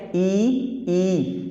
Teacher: फिर ई, जब हम कहते हैं ई, तो हम आप देखिएगा जिह्वा थोड़ी सी मोटी होकर तालू में चिपकती है, तब जाके उच्चारण होता है ई का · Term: तालव्य